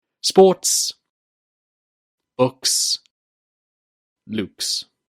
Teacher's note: If a word finishes with an unvoiced sound, such as sport, book, or Luke, then the S ending sound is also unvoiced.